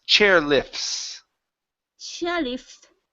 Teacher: So if it was singular, then yes, we would say chairlift. Okay, but because the T is trapped between two other consonants, the F and the S, the T disappears